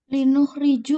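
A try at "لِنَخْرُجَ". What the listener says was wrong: Kan masih salah. Kenapa dibaca nu juga? Yang nu itu yang 4. Kalau yang 3, yah. Ada lam ta'lil. Iya, linakhrija.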